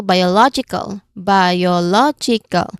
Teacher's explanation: So we um the rule says here that we stress on the third syllable from the end